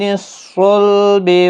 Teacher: با ساکن پر قلقلہ ہوگا وقف کی صورت